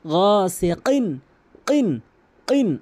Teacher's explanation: কফের উচ্চারণ জিহ্বার গোড়া উপরে তালু থেকে